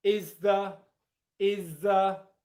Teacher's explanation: So, it would sound like is the is the with a schwa sound at the end. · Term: assimilation